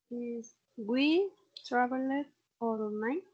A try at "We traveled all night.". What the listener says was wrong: vale, ahí en travel como la E no la pronuncio. We traveled.